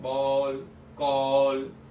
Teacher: तो ये आ और ओ के बीच की ये ध्वनि है अ।